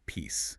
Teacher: That word is pronounced with a voiceless S sound. >> No vibration.